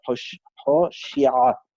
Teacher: the ayin comes from the throat in Havara Sfardit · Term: guttural letter